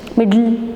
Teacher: So in words like middle and little, the plosive sound d and t are followed by the lateral sound l, and in such words the tongue does not leave the teeth ridge.